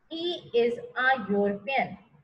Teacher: the word starts with a vowel, but it gives the sound of a consonant, that is Y again